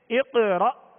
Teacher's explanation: جب حمزہ ساکن پڑھا جائے تو اس میں جھٹکا واضح ہوگا. جیسے اقرأ، را، یہ حمزہ ساکنہ میں جھٹکا واضح دیں گے.